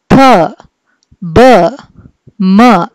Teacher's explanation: When both the lips come together ఎప్పుడు sound మనకి produce అయితే అలాంటి సౌండ్ మనము బైలేబియల్ సౌండ్ అని చెప్పి అంటాం.